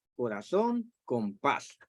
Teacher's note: las agudas pues la sílaba tónica está en la última sílaba